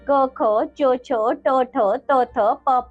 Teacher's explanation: जिन वर्णों के उच्चारण में प्राणवायु में प्रकंपन नहीं होता उन्हें अघोष वर्ण कहते हैं